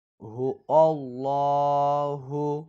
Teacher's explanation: এখানে লাম শব্দটি মোটা করতে হবে